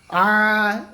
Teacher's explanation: আলিফের আগে জবর, আলিফ মাদ্দাকে এক আলিফ টান দিয়ে পড়বো